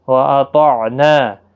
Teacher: طا حروف مستعلیہ ہے، پر پڑھنا ہے